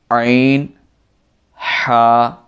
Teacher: یہ دونوں حروف حلق کے درمیان سے ادا ہوتے ہیں